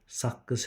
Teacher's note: 3 müxtəlif səs. Qoşa Q, birinci K olur, ikinci Q kimi tələffüz olunur. Saqqız şəklində tələffüz olunur.